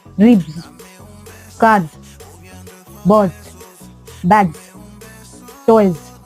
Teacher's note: you are having vibration in your throat so they are called voiced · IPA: /z/